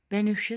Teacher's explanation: bənövşə sözündə vurğu axırıncı hecanın üzərinə düşür. Yəni axırıncı ənin üstünə.